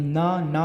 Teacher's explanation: ना में हमारी जीभ क्या होती है, दांत से टकराती है।